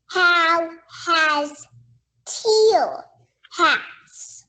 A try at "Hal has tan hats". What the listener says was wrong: This word has that A-N in it. Say the sounds.